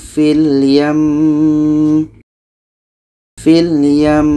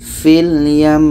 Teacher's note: Maka hukum mim tasydid ini adalah wajibul hunnah, wajib dengung. Maka ketika berhenti tetap kita dengungkan dulu baru matikan mimnya.